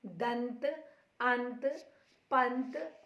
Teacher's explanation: इसमें पहले स्वर का उच्चारण होता है और बाद में नासिक्य यानी नाक से जो ध्वनि निकलती है, जैसे दंत, अंत, पंत आदि। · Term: अनुस्वार